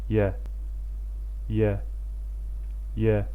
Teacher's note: bu hərf dilin ortası yuxarı damağa dəyərək və hava axını dilin ortası ilə damağın arasından çıxaraq tələffüz edilir. Azərbaycan dilində olan Y səsinin tamamilə oxşarı və incə formasıdır. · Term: Y hərfi